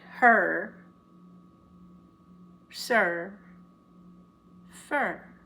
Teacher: when the R takes over and becomes the vowel really. You don't hear the E, the I, or the U.